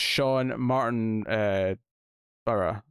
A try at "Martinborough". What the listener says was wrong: Martinborough? It's because there's no extra O between the B and the R. So it's just Martinborough.